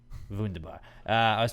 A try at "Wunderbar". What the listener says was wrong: You don't pronounce the R.